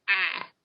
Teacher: so if I'm talking about I as a person, oftentimes you'll hear it in the South as ah.